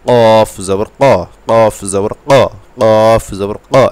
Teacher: ধাপে আপনি উচ্চারণ করবেন কী অক্ষর, এই শুধু কফ অক্ষরটা, কফ, জিব্বার গোড়া তার বরাবর উপরের তালুর সাথে লাগবে , এই কফ চার নম্বর মাখরাজ, কফ জবর ক, কফ জবর